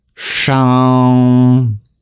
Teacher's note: This is the retroflex sibilant where you curl your tongue back.